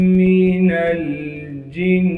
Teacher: نون کو لام ساکن سے ملانا ہے، جیم کو نون مشدد سے ملائیں گے اور نون مشدد میں ایک الف کی مقدار غنہ کریں گے۔